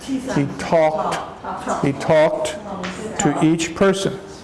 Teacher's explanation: When we put an ED on talk, it's a T sound.